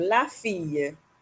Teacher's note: The 2 L's aren't really pronounced like L so much. You get a Y sound more of a Y sound.